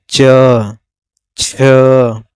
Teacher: जिन वर्ण का उच्चारण करने पर जीभ का मध्य भाग तालू को स्पर्श करता है उसे हम तालव्य व्यंजन कहते हैं